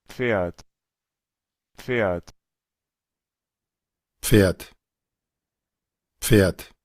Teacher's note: Entonces, pueden ver que en algunos casos se pronuncia la R, vean, la P igual se va a pronunciar, pero puede ser omitida, digamos, el sonido de la P, debido a que la P, al encontrarse con la F, su sonido pues tiende a no percibirse